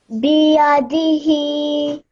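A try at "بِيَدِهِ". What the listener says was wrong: But make sure that this one, the B, just stretch it for 1 second, no longer than that, okay? Biyadihi.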